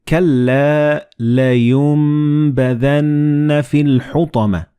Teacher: the noon and ba, when they follow one another in the same word, you don't pronounce noon, but you pronounce meme